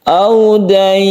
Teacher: Mat lain ketika waqaf dia menjadi mat arid disukun. Cara membacanya boleh 1, 2 atau 3 alif. Audain, panjangkan dan lemaskan.